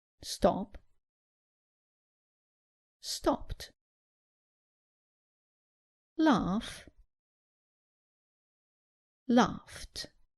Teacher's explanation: When ed sounds like t. This happens when the infinitive verb ends in a soft or unvoiced consonant, such as s, sh, ch, k, p, f.